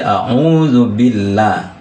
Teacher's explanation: Bunyi lamnya itu tipis, ya, bukan billah, bukan ditebalkan tapi ditipis. Berarti a'udzu billahi minasyaitonir rajim.